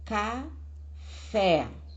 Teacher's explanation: A sílaba tônica é fé.